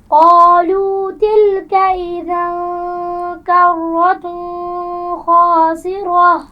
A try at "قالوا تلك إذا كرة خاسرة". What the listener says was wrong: ایک تو اذن حمزہ کو واضح کیجئے. کرتن خاسرہ، تنوین کے بعد حروف حلقی میں سے خا آ گیا ہے، تو کیا یہاں پر غنہ ہوگا؟ تو یہاں پر غنہ نہیں کریں گی.